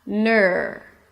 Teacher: So there is actually no vowel between the N and the R.